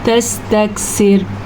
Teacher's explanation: تستکثر میں را باریک پڑی جائے گی اور کاف پہ کسی قسم کا کوئی جھٹکا نہیں ہوگا کیونکہ یہ موٹی کاف نہیں، یہ باریک کاف ہے، ٹھیک ہے؟